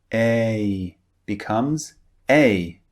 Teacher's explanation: a is actually two vowels pushed together to make one sound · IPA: eɪ